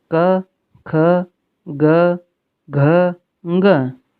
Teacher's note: कु, कु यानी क वर्ग, क, ख, ग, घ, ङ, ये सभी कंठ से बोले जाते हैं। जब हम इन वर्णों को बोलेंगे तो कंठ से ध्वनि आएगी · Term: कंठ्य